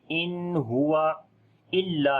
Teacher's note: لام کے اوپر شد ہے، تھوڑا سٹرونگ کریں گے اور لمبا بھی کریں گے